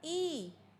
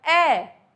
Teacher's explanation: फिर हमने बोला ई, तो ई और ए, ई में तो बिल्कुल ही नहीं खुला और ए में थोड़ा ज्यादा खुला